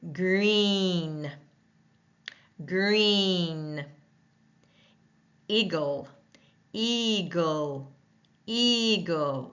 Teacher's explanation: the tongue is high in the front of the mouth and the mouth is tight